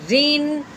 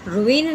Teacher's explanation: جس رو کے نیچے زیر آ جائے اس رو کو باریک کرتے ہیں، پور یعنی موٹی نہیں کرتے، روین نہیں کہنا، ہم نے اس کو بالکل باریک کر کے پڑھنا ہے۔